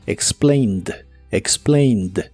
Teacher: la forma del presente solo que ahora termina con e d aunque no pronuncias la e solamente la d